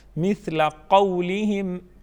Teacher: مثل قولہم، قو قاف کو پر پڑھیں گے. قولہم واو ساکن سے پہلے حرف پر زبر ہیں، واو لین ہے، واو لین کو جلدی پڑھیں گے اور نرمی کے ساتھ ادا کریں گے